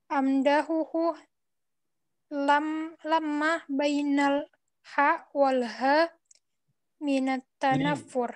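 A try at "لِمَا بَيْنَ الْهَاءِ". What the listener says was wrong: Ini bukan lama. Lima bainal ha'i.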